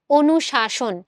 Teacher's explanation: দুইটা স এর উচ্চারণে কিন্তু কোন পার্থক্য তুমি পাবা না। সো এখানে দুইটাই তালব্যস হবে এবং কোনটা হবে?